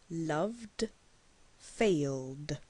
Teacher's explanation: D is a voiced sound, and you can place a hand on your throat to feel the vibration.